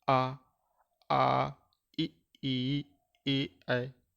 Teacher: इनमें दोस्तों हमारा मुख का थोड़ा गोलाकार नहीं बना, इसलिए इन्हें कहते हैं आवृतमुखी। वृत्त नहीं बना मुंह का।